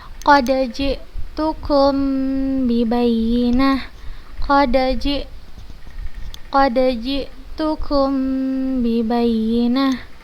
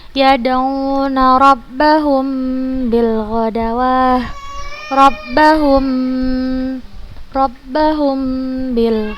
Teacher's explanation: apabila mim sukun bertemu dengan huruf ba, cara membacanya adalah dengan menggunakan huruf mim itu dengan tempo yang dipanjangkan. Cara bacanya adalah menggunakan huruf mim yang sukun itu dengan tempo yang dipanjangkan, agak dilamakan gitu. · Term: ikhfa syafawi